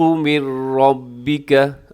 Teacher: یہاں پہ ادغام ہو رہا ہے لیکن بغیر غنے کے ہو رہا ہے، نون ساکن کے بعد را ہے تو یہاں بغیر غنے کے ہوگا لیکن را پر پڑھا جائے گا۔